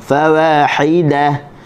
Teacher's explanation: Ha bagi bawah, hi kita senyum. okey, keluarkan daripada halkum tengah